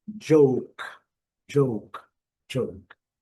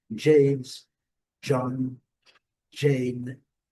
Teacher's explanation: Eu falei que o G lá atrás tinha um D imaginário. Para a palavra com letra J no início, todas vão ter o D imaginário.